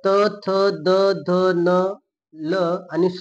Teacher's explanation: हे दंत मुखाचा भाग आहे आणि वर्णाचे नाव काय आहे दंत्य वर्ण आहे